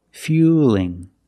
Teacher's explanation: now we see the word fueling with the L between vowels so it's a light L